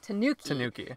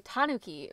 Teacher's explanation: English-speaking Americans put it on the second syllable and in Japan a lot of times it's on the first syllable